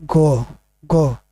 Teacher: तो ग का उच्चारण कहाँ से होता है? तो ये कंठ से होता है।